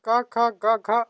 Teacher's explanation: कंठ से उच्चारण होता है · पूरा क वर्ग यानी कि क ख ग घ अंग, ह और विसर्ग का उच्चारण कंठ से होता है